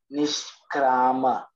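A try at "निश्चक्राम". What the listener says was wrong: Not nishkra, nishcha. Cha is there, right, in between?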